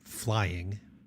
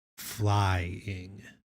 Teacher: The emphasis is on the first beat.